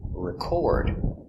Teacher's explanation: and here it is a verb it is an action record the stress is on the second syllable